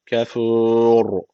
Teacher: ra harfine üstten giriş yapıldığı için ra harfi burada yine kalın okunacak